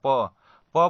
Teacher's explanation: देखिए दोनों ओठों को स्पर्श करते हुए वायु निकल रहा है। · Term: ओष्ठ